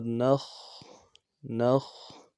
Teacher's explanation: خا موٹا حرف ہے، موٹا کریں گے، اور خا میں آواز جا رہی ہے جزم کی وجہ سے